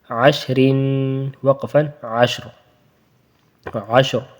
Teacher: تو یہاں زبر ہے تو اس لیے را کو وقفن میں پر پڑھیں گے، موٹا پڑھیں گے. جب وصلن پڑھیں گے، رن پڑھیں گے تو وہاں باریک پڑھیں گے.